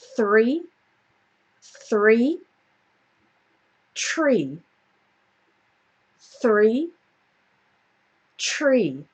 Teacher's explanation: for um three then my tongue is between my teeth but for tree it's not